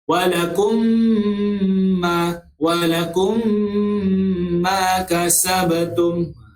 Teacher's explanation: mim mati bertemu dengan huruf mim. Dia tak ada huruf yang lain. Satu saja huruf mim. Jadi dia kena baca dengung sebanyak 2 harakat. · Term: idgham mislaini